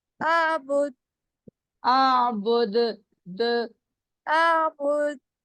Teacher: دال پہ نا اپنے ایسے کرنا ہے جیسے آواز میں ٹکرا کے واپس آ رہی ہے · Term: کلکلا